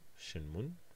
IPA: ʃinmun